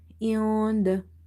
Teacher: After nun sakin you see there is letter dal which is from the ikhfa letters, so you will hide this nun sound